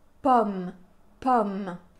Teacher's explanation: Dans le mot pomme, on a un O ouvert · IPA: ɔ